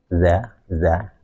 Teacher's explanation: kalau dalal itu sifatnya adalah istighfal dan infitah